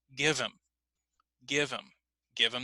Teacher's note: a couple of weeks this is called the disappearing age so we can cut the h and then we can link the sounds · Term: the disappearing H